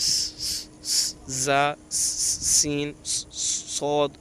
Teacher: اور ان 29 حروف میں سے 3 حروف زا، سین، صاد ادا کرتے وقت سیٹی کی آواز آتی ہے، سیٹی جیسے زا، سین، صاد آواز نکلتی ہے، اس لیے ان حروف کو حروف صفیریہ یعنی سیٹی والے حروف کہتے ہیں۔